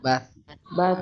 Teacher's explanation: Bas, keluar angin juga ya. ya keluar angin, tapi nggak banyak.